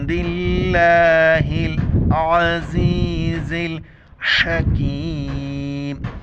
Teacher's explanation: लफ्ज़ अल्लाह को बारीक पढ़ेंगे क्योंकि ज़ेर हैं। लफ्ज़ अल्लाह की हा को लाम के साथ मिलाना है।